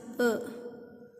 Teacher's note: A is unrounded central half open.